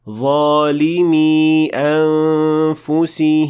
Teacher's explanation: I was supposed to extend for 2 harakat because this is a ya